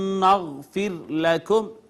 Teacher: را ساکن ما قبل مکسور ہے, اس را کو باریک کر کے پڑھیں گے